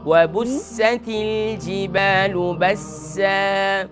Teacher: یہاں پر سین کے اندر صفیر کو ادا کریں